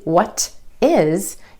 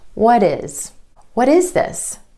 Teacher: Instead of a true T, what is, you're going to put in that D sound or flap T.